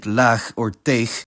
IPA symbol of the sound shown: x